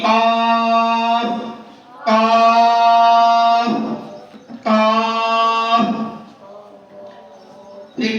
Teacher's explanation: किधर है तालु का नर्म हिस्सा? सामने है या ऊपर है? ऊपर है, यानी इसकी आवाज ऊपर उठेगी।